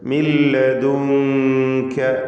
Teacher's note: ഇഖ്ഫ ഹഖീഖി നൽകി അവ്യക്തമാക്കി മണിച്ചുകൊണ്ട് മറച്ചു മണിച്ചാണ് നൂനിനെ ഉച്ചരിക്കേണ്ടത്